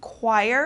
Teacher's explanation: this CH turns into like a K sound